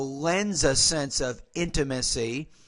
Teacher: sometimes we'll take the S and we'll blend that to the first letter of the next word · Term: blending